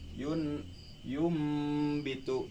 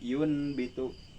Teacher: si nun seolah-olah digantikan dengan mim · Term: iqlab